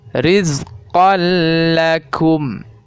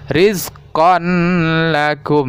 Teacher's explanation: maka cara membacanya seolah-olah ditasydidkan ya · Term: idgham bilagunnah